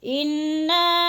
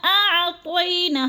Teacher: حمزہ اور عین میں فرق کر کے پڑھنا ہے، کیونکہ حمزہ حلق کے آخری حصے سے نکلتا ہے اور عین حلق کے درمیانے حصے سے نکلتا ہے